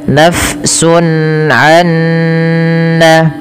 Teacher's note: Karena bertemu dengan huruf ain yang mana huruf ain merupakan huruf halqi yaitu yang keluar dari tenggorokan. Maka hukum tajwidnya dikenal dengan izhar halqi. · Apabila ada nun sukun bertemu dengan nun setelahnya, maka membacanya nunnya dimasukkan ke huruf nun kedua dan ini kita kenal dengan idgam bighunah.